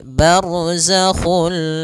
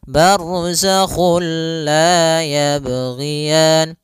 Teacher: dia bila ghunah berarti tidak boleh disertai dengan ghunah. Tidak boleh ada penahanan. Tidak boleh barzakhul. · kita memasukkannya secara utuh, secara seluruhan kepada huruf lam sehingga tidak menyisakan sedikit daripada bunyi huruf nunnya. Ya, sehingga langsung masuk barzakhul la, dan dia bila gunnah berarti tidak boleh disertai dengan gunnah, tidak boleh ada penahanan. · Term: idgham bilaguna, idgham bila gunnah